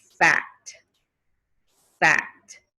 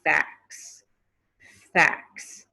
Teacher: you hear how that t disappeared you don't hear the t sound anymore